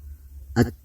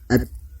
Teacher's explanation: sifatnya syiddah atau keras. Jadi ketika membunyikan huruf ta tidak ada bunyi tambahan. At. Nah, tertahan di situ.